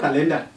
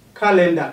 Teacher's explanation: Calendar, car is stressed.